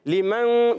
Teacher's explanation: نون ساکن تنوین کے بعد جب کبھی حروف اخفا میں سے کوئی حرف آتا ہے، اخفا ہوگا، نون کو چھپائیں گے، غنہ کریں گے ایک الف کا، ناک میں آواز لے جائیں گے اور نون کو چھپا کے ادا کریں گے